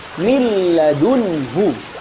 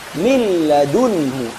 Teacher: Apakah nunnya terdengar? Tidak. Kenapa? Karena sudah dimasukkan ke suara lam. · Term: idgham kamil